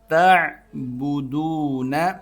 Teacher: تا کو عین سے ملانا ہے، عین کو حلق سے نکالنا ہے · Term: عین حلق سے